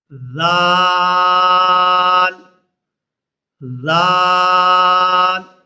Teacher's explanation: دال زال زال زال کو بھی بالکل نرمی کے ساتھ ادا کریں گے۔ زال اور سا کا مخرج ایک ہی ہے، زبان کی نوک اور اوپر والے دانتوں کا کنارہ